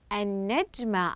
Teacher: قمنا بتشديد الحرف الذي بعد اللام الشمسيه حتى يصبح حرفا مشددا وهو النون